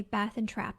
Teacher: these two classes are merged in the US, which is why I say Bath and Trap the same way.